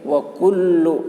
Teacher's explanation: لام کے اوپر تشدید ہے، تشدید والے حرف کو 2 مرتبہ پڑھیں گے، ایک مرتبہ پہلے حرف سے ملا کر، ایک مرتبہ خود اسے۔